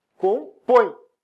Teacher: E o E é sempre semivogal. Ah, mas é um E, mas é um E com som de I. Por isso é uma semivogal. Um exemplo de um ditongo decrescente.